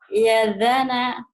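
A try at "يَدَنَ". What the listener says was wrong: Kedengerannya masih za ya. Ya dana gitu Bu.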